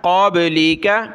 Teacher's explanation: قاف کو موٹا کیا، با پر قلقلہ